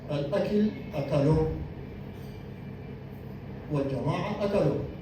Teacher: الجماعه اكلوا هنا ما في نبر، لكن الاكل اكلوا في نبر في المقطع الاخير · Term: النبر